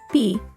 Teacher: our lips come together and then they open up with a soft pop